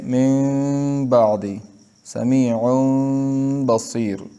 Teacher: ساکن اور تنوین کے بعد اگر حرف با آئے تو اس نون ساکن اور تنوین کو میم سے بدل کر غنہ اور اخفا کے ساتھ پڑھیں گے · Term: اقلاب